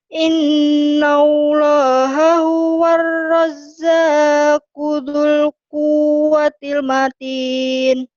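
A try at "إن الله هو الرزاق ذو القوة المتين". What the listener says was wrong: Innallaha huwar razzaqu dzul quwwatil matin. Jangan buru-buru. Innallaha huwar razzaqu dzul quwwatil matin. Zul jadi pendek ya. Zul quwwatil matin. Ya jangan buru-buru ya.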